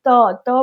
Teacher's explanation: त बोलने से क्या है, हमारा जीभ जो है दांत से सट रहा है